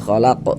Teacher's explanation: Kalau berwakaf di huruf yang tidak dibaca panjang, hurufnya kita sukunkan, kita matikan. Kemudian huruf qaf ini dia mantul karena dalam keadaan sukun sebab kita sukunkan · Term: qalqalah kubra